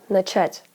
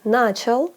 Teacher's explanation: The second syllable is stressed in the infinitive, but in the past tense, on начал, it switches to the first syllable. In this case, the meaning is not affected, this is just the way we pronounce it.